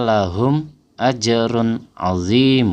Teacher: jadi kita membacanya jelas enggak ada dengung sama sekali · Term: Izhar Syafawi